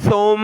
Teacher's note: اس کو آپ نے ثم نہیں پڑھنا بلکہ زبان کی نوک تھوڑی سی باہر نکال کر اس کو نرمی سے ادا کرنا ہے